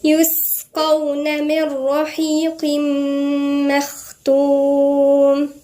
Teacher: في همس عند السين لأنها ساكنة